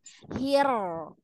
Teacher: Bismillahirrahmanirrahim ya itu rnya takrirnya kebanyakan karena terlalu depan ujung lidahnya ujung lidahnya mundurin sedikit hir enggak akan banyak takrirnya